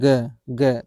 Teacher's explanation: तो गले में आप यहाँ कंठ पे आप थोड़ा-सा हाथ रख के देखेंगे, ग को उच्चारण करने से थोड़ा-सा क्या हो रहा है? कंपन फ़ील हो रहा है, वाइब्रेशन फ़ील हो रही है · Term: सघोष वर्ण